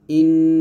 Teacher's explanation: নুনের গুন্নাটা হলো জিহ্বার আগা ও পরের তালুর সঙ্গে লাগিয়ে আমরা নুনের গুন্নাটা আদায় করব